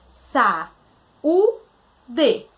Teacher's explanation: A gente tem o u tônico separado em uma sílaba. Então, a gente tem aí a presença de um hiato.